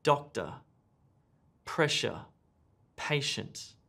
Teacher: These words have emphasis or word stress on the first syllable.